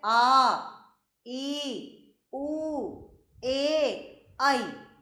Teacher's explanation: जब हम बोल रहे हैं तो इनको थोड़ा सा समय ज्यादा लग रहा है, ह्रस्व स्वर से अधिक समय लग रहा है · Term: दीर्घ स्वर